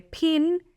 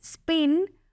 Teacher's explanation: en inglés los sonidos p de pin e spin son distintos, uno con aspiración y otro sin